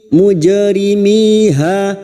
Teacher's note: jim sukun yang mati asli di tengah kalimat qalqalah sugroh, jangan lupa dipantulkan mujrimiha, miha masing-masing dua harakat mad tabi'i.